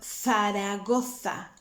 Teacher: the letter z is like a th i don't know if you heard of the town faragotha in spain so that is with your tongue between your teeth